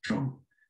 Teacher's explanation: And so TR is actually one phoneme, the retroflex T, so it's tro.